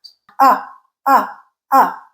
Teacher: So, it is a mid central lax and unrounded sound. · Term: schwa sound